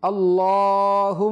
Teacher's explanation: এই লামটা মোটা হবে এবং মিমটাও এক আলিফ পরিমাণ গুন্না হবে।